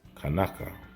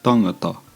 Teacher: in Hawaiian, K sounds change from T sounds like in Maori.